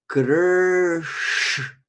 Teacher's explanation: So, so this sh, is very convenient in the name Krishna, because that sh is pronounced just, the tongue stays there. When we curved our tongue backward to pronounce r, kr, the tongue stays there and says sh.